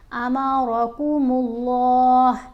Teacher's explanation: اللہ کی لام کو موٹا بھی پڑھیں گے اور لمبا بھی پڑھیں گے، کیونکہ کھڑا زبر ہے نا اوپر، اس لیے لمبا پڑھیں، ایک الف جتنا۔